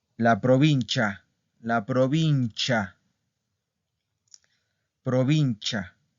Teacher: Aquí la I no suena.